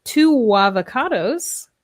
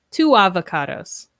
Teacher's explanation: So we can add the W sound or the Y sound depending on the 2 vowels. So here with 2 avocados, we link the sounds with W